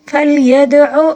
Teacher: اب دیکھیں یدعو دال کے اوپر ساکن ہے، دال کے اوپر جب ساکن آ جائے تو اس کو قلقلے کے ساتھ پڑھنا ہوگا، ٹھیک ہے. فلیدعو آئین کو حلق کے درمیانی حصے سے ادا کریں گے، ٹھیک ہے.